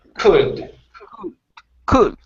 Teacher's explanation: Okay, so instead of cooled, the L is silent, and it's going to be a Could.